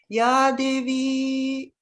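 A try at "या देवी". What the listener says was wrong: Devi. Ya Devi. But you didn't have the problem with the E. You're having the problem with the A.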